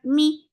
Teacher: For kasra give e sound. The sound is very short. Mi. His for kasra give e sound attached with sin.